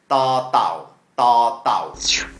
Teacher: you need to take your tongue and put it under your top teeth and make a D sound from there.